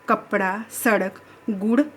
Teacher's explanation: अड़ का उच्चारण स्थान कौन सा है? मूर्धन्य, मुंह के भीतर की ऊपरी छत का अगला भाग।